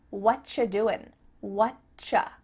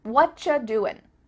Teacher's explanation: what cha it sounds like a ch sound here and actually we've cut out completely the word are and the word you just becomes cha